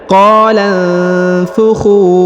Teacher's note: huruf khu dipanjangkan 2 harokat, huruf khu yang ini karena di depannya terdapat waw sukun atau waw mati, dan alif yang di depan ini tidak dibaca atau tidak dianggap, ya.